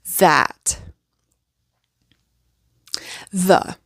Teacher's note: the voiced th so again tongue always between your teeth make sure it's there and there's going to to be vibration in your throat